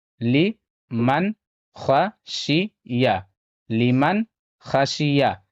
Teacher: یہاں پہ نون ساکن کا اظہار ہوگا کیونکہ نون ساکن کے بعد خا ہے اور خا حروف حلقی میں سے ہے، یہاں پہ نون ساکن کی آواز کو ظاہر کر کے پڑھنا ہے